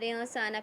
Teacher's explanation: نون کی آواز کو چھپا کے پڑھیں گے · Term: اخفا